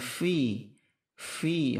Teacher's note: fi huruf fa, itu hamas, ada anginnya